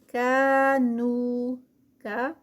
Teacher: کاف کو موٹا نہیں کرنا، یہ باریک والا ہے